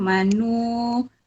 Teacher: Manu ada mad asli waw. Dibaca panjang 2 harokat juga.